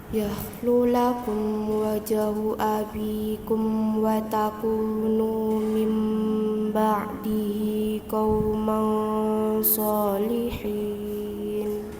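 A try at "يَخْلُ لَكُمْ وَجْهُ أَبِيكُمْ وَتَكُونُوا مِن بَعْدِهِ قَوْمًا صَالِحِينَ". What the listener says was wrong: Ya, PR-nya huruf jim. Ya, jimnya tadi desis, harusnya tidak boleh.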